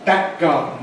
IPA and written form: ˈbæk̚ ˈgɑːdn̩ (back garden)